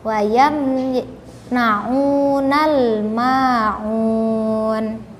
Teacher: harus lebih diperhatikan lagi huruf ainnya, huruf a, karena terdapat 2 huruf a ya. Jangan sampai dibaca hamzah huruf a itu.